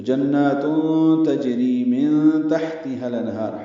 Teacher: تو جنات تجری من تحتها الانہار، ہا ساکن پہ ہم سے، ہا کو الانہار کے لام سے ملا دینا ہے